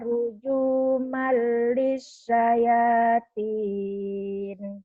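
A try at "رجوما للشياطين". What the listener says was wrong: Shinnya keluarin, kurang keluar tuh. Ruju malis syayatin, sekarang ulang tadi. Ruju malis syayatin. Ruju malis.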